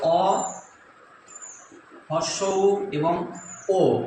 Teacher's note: পেছন দিক থেকে উচ্চারণ করতে গিয়ে মুখটা গোল হয়ে যায়